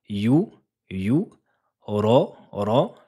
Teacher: lettre emphatique coloriée en bleu. C'est une lettre grave, gonflée l'arrière de la langue.